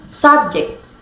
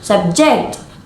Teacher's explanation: subject with stress on the first syllable is a noun, and subject with stress on the second syllable is a verb